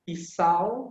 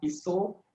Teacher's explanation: your AU sound will be the O sound. So things like pisau will become piso, kalau will become kalau.